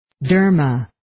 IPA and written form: 'dɜːrmə (Derma)